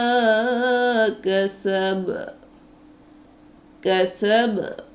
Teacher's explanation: হরকত যুক্ত হরফ অকফ অবস্থায় কলকলা হয়েছে এখানে বা উচ্চারণের প্রতিধ্বনিকে তৃতীয় ভাগের দুই ভাগ আদায় করতে হবে